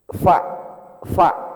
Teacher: Huruf fa itu satu bibir doang yang berperan. Bibir bawah bagian dalam ya ketemu dengan gigi atas.